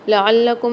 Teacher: لام کے اوپر مشدد آ رہی ہے، اس کو سختی اور جماؤ کے ساتھ پڑھیں گے